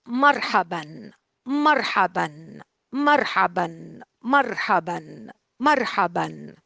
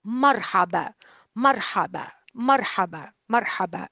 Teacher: once you drop the tanween, that sound N is gone. So the last sound that you would hear would be the alif, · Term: dropping the tanween